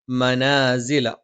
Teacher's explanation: മ രണ്ട് ചുണ്ടും തുല്യമായി അടച്ചു വെക്കണം.